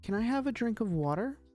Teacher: this one's supposed to be rising intonation